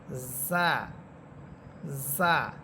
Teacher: জিহ্বার অগ্রভাগ সামনের নিচের দুই দাঁতের অগ্রভাগের সাথে লাগবে বা আগার সাথে লাগবে।